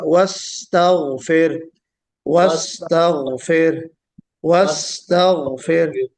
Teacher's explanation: سین میں سیٹی بھی ہے، سین میں جریان النفس یعنی ہمس بھی ہے، اور سین میں آپ کی جریان الصوت بھی ہے، دونوں چیزیں، جی یعنی ہمس بھی ہے اور رخوت بھی ہے۔